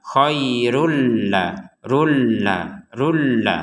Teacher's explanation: dhammatain atau tanwinnya dimasukkan kepada huruf lam